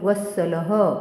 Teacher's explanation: पंक्तीच्या शेवटी येणाऱ्या विसर्गाचे उच्चारण ह सारखे केले जाते